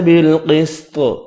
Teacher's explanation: قاف اور طا حروف مستعلیہ ہے، پر پڑھے جائیں گے۔ وقف کیا، طا ساکن ہوگا، قلقلہ کریں گے۔